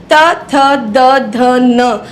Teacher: आपकी जीभ सीधी जो है ऊपर वाले दांतों के निचले अंदर वाले हिस्से पे टकराती है।